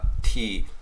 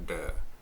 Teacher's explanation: So, if you think of a sound like T, feel where your tongue hits the roof of your mouth, T. For me, it's T, closer to the teeth, T for teeth. Da is a little further back, da.